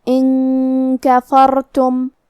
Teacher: آخری میں یہاں میم ساکن ہے، میم کا حکم ہے اظہار شفوی، لہذا ہم حرف المیم کو ظاہر کرتے ہوئے اور بغیر غنہ سے یہ حکم کو ادا کریں گے · کلمت کفرتم کاف حروف الاخفاء میں سے ہے اور اخفاء کا معنی ہے چھپا دینا، لہذا ہم نون کو چھپاتے ہوئے اور غنہ کے ساتھ یہ حکم کو ادا کریں گے